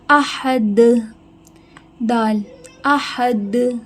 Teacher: دال پہ قلقلہ ہو رہا ہے۔ قلقلہ کا مطلب ہے آواز واپس ریپیٹ آنا